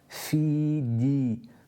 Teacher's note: The jim here doesn't have any air that's accompanied with it, so it's a pure sound created from or pronounced from the middle of the tongue.